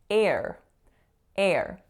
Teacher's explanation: the letter A is combining with that R to make a complex R-colored vowel, and it's the sound air.